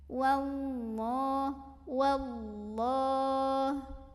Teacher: Maka alif lam ini tidak perlu dibaca. Dari waw langsung kita tekan ke lam berikutnya, diidghamkan atau dimasukkan. Wallah, Allah mad asli atau mad tabi'i karena ada fathah tegak di atas huruf lam. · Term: alif lam syamsiyah